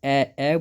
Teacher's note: ए बोलते हैं तो बच्चों तो कंठ और तालु दोनों यूज होता है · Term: कंठ तालव्य